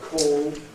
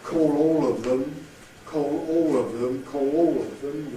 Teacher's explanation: So the word call and all would have velarized L's in isolation, but they have the clear L when they're followed by words beginning with vowel or anything with a yod.